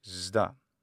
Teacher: sigma, being phonemically voiceless, it'll only be voiced in front of voiced consonants. And that makes sense why sigma plus delta would be zda.